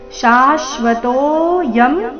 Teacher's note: ತೋ ನಂತರ ಅವಗ್ರಹ ಇದೆ ತೋ ಸ್ವಲ್ಪ ದೀರ್ಘ